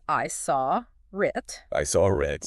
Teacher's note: okay often native speakers will pronounce it as I saw RIT I saw RIT with a little r sound creeping in between the words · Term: connected speech